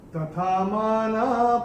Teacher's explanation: ये जो लास्ट में जो विसर्ग आ रहा है चौथे चरण की समाप्ति पे, इसका उच्चारण ह ही होगा, क्योंकि ये चरण की समाप्ति पे आ रहा है।